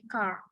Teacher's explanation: Tapi kalau British itu mungkin lebih car. Jadi R-nya itu nggak begitu terdengar jelas. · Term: bunyi R